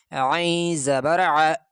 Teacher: عین گلے سے نکالتے ہوئے، جیسے بلغم نکالتے ہیں بندہ کھانستا ہے، اس طرح گلے سے نکالتے ہوئے، گلے پہ زور لگا کے عین زبر ع۔ لیکن عین میں خیال کرنا چاہیے کہ عین سے حمزہ نہ بن جائے، عین نہیں بن جانا۔